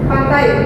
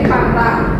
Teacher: Diphthong diubah menjadi satu vokal saja.